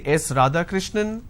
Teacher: now it goes on a rising tone now it doesn't come as an answer it comes as a guess · when you are responding with a rising tone it doesn't sound like a statement